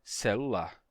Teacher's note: não eu não disse na verdade eu disse celular não celular eu fiz uma consoante geminada que é quando você tem uma consoante dupla você pronuncia uma consoante e ela dura mais tempo · eu só segurei o L por mais tempo e disse celular